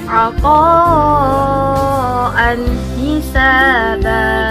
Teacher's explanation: Huruf ha hurufnya idhar halqi yang apabila bertemu dengan nun sukun atau tanwin harus dibaca jelas atau terang.